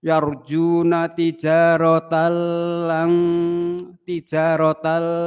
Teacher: Idgham bila ghunah masuk tanpa dengung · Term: Idgham bila gunah